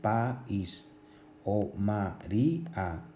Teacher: la vocal tónica, la fuerza está en la I, en estos dos casos, en país y en María, que es una vocal cerrada. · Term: hiato